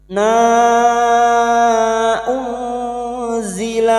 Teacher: bertemunya mad dengan hamzah di lain kalimat mad jaiz munfasil kita samakan dengan sebelumnya lima harakat kita panjangkan